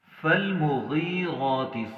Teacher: غین کے نیچے ہم نے زیر پڑھنا ہے، لیکن ہم نے اسے موٹا پڑھنا ہے کیونکہ یہ موٹے حروف میں سے ہے